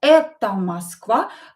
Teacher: So O is not stressed. We will pronounce it as A.